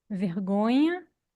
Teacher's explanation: o nhã ser pronunciado como um iã, um glide palatal nasal, como em vergonha, e nesse caso, geralmente se chama de iotização ou ieísmo.